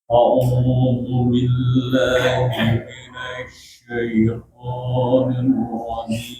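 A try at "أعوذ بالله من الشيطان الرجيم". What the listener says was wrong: Oke, sekali lagi sya kemarin kita sudah belajar, bukan di bibir. Jadi kan sya. Masih coba di minasya biasa. Masih coba satu huruf saja. Sya, sya, nasya, nasya. Nah, kayak gitu tuh, tidak bergerak bibirnya.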